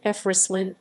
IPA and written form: fʁɛslin (Fresselines)